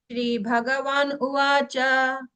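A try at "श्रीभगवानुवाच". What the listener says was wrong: அப்படி பிரிக்காதீங்க. பகவான் உவாச்ச, பகவான் உவாச்ச. கண்டினியூஸ், நாட் பகவான் உவாச்ச.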